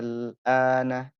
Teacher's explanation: Ini ialah yang disebut dengan mad aslinya. Madnya panjang kemudian ketemu dengan sukun. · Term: mad lazim kilmi mukhaffaf